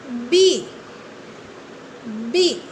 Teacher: Yes, your lips are touching with each other, isn't it?